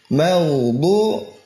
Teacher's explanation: Ihda hafatil lisan, salah satu dari tepi lidah atau keduanya. Ya, ke gigi geraham atas, ilal abras, diangkat ke atas. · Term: dha